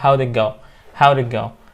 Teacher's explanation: تربط ال W بال D بس دي كده بتسمعها دي، و it ما بتسمعهاش